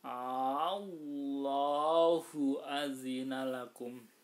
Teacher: Mad farq itu apabila ada mad hanya ada di 4 kalimat ya, ada di 4 kalimat, dan ini harus dipanjangkan. Cara membacanya dipanjangkan untuk membedakan antara pertanyaan dan bukan.